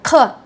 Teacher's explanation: Слово Казахстан, ну, немножко буква к, но такой сложно созвучный, через горло говорим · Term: тяжелый к